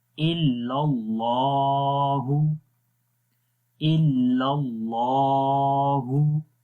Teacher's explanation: اللہ کے نام کے اندر جو لام ہے اس کو موٹا پڑھیں گے